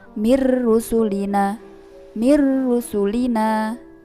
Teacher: ada nun sukun bertemu dengan huruf roh sehingga cara membacanya yaitu langsung dimasukkan pada huruf berikutnya yaitu huruf ro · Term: idgam bilagunnah, idgham bila gunnah